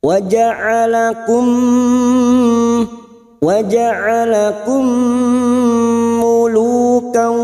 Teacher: Lu cuma diikuti waw sukun 2 harokat.